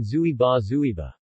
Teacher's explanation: the second syllable is likely to begin with a b sound, rather than an unaspirated p. The vowel of a weak syllable is often reduced, becoming more central.